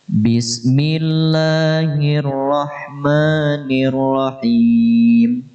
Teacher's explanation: Ba dengan menahan desisan angin.